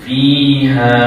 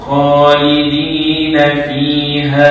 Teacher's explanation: Mad jaiz munfasil ini apabila wasal maksudnya bila kita sambungkan bacaan barulah bacaan dia tu menjadi empat atau lima harakat. Tapi kalau kata kita nak wakaf contoh macam ni, maka bacaannya cukup sekadar dua harakat.